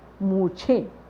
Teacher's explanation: मुंह और उसके ऊपर चंद्रबिंदु, तब बोलने में लग रहा है कि मुंह, नाक से बोल रहे हैं